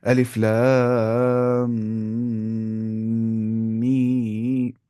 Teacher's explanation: मीम को खींचते वक्त दूसरे मीम में गुना ना हो